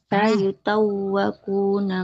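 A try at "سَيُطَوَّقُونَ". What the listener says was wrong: Tidak sayu. Sayu. Ya-nya tidak bertasydid Ibu ya. Sayutawwaquna.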